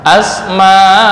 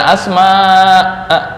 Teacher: A itu ukurannya 1 alif atau 2 harokat.